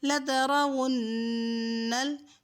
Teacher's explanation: نون مشدد ہے تو غنہ بھی کریں گے